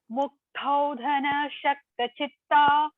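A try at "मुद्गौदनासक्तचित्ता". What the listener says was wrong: It is not Shakta, ma. It is not Shakta. It is Sakta. Saraswati sa. You have to correct in it Sakta Chitta.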